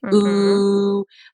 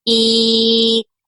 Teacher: So for like an ooh sound, they're rounded, right? Ooh. Whereas for an e sound, they're pulled back e. And you can hear even in that the oo is darker than the e. So if you move back and forth between them, that's shaping like a darker, brighter sound.